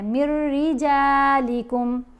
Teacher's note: را کے اوپر غنہ نہیں ہونے دینا، جلدی سے ادا کرنا ہے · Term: ادغام